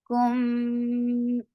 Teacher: This is ikhfa shafawi. Kum, you're keeping the sound in your nose very nicely.